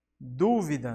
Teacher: du será a mais forte, ou seja, a antepenúltima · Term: proparoxítona